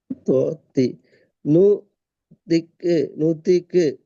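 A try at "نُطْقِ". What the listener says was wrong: தீ அல்ல. திருப்பி தீ தான் வாரீங்க. பாடி பாடி துய். வாய் ஃபுல்லா சொல்லணும். ரெண்டு கண்ணங்களுக்கு குவியலாகி வாய் ஃபுல்லா அடுத்து துய் என்று சொல்லணும்.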